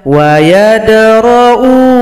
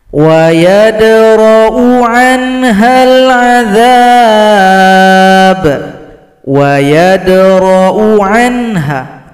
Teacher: Di sini hamzah yang dhamma berjumpa dengan alif. Hamzah dhamma bisa panjang kalau jumpa waw sukun, tapi jumpa alif maka di sini dibaca pendek. Tidak boleh panjang.